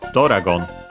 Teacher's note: Doragon, high, and then everything else low · The accent is in this case on the do itself. So yeah, not exactly like in English, it's slightly moved in Japanese.